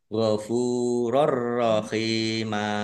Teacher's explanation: Fathah tanwin bertemu dengan huruf ro bacaan idgham bila gunnah. Masuk dengan tidak mendengung.